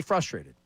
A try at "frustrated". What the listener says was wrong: Yeah, but you don't say the R.